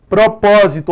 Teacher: Propósito é uma proparoxítona, correto, a antepenúltima é mais forte.